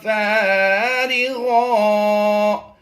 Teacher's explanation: دو زبر کی تنوین کو وقف میں ہم نے الف مدہ سے بدل دینا ہے